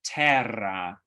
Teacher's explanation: so that's the voiced alveolar trill